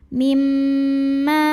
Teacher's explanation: Huruf mimnya gunnah musyaddadah karena mim bertasydid. Cara bacanya dengung, bunyi M-nya tahan kurang lebih 2 harokat.